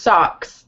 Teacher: Yeah, it's actually pronounced socks. So it's like this ah sound for the O.